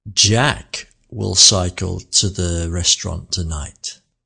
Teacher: The word Jack here had the most melody.